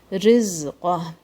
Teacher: Rizqah, this ra is light.